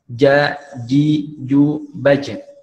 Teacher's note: Ya, kemudian sifatnya dari huruf jim tadi adalah dia pertama syiddah, ya tadi seperti yang diucapkan tadi benar, syiddah, kemudian qalqalah ketika dia sukun, ya. Kemudian jahar, ya, tidak keluar nafas.